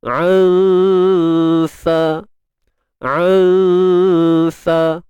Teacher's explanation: huruf sin ni bersifat nipis, dan secara tak langsung dengung kita ni tadi, dengung ikhfa kita ni juga ni nipis.